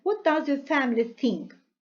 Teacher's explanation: Here important words are what and family. So they are important and stressed.